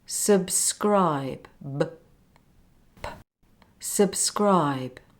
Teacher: The last B is much softer. It almost sounds like a P sound